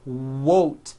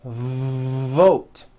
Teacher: depending on your native language you may be replacing your V sounds for w sounds be careful not to do this the word is not WOTE